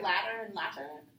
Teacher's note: they don't pronounce the T's; they just say it like a D